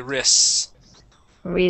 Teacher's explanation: we say it so quick. It almost sounds like we skip over that T and say wrists.